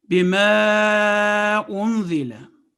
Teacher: Small madda is pronounced 3 to 5 seconds.